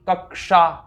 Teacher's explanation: ये जो मूर्धन्य शकार है इसका उच्चारण हम करते हैं मूर्धन प्रदेश से, मतलब जहां से हम ट करते हैं